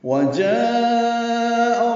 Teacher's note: جاء میں مد متصل ہے، جیسے اذا جاء نصر اللہ. الف مدہ کے بعد حمزہ آنے کی وجہ سے مد متصل ہے، لمبا کریں گے مد متصل کو 4 حرکات سے زیادہ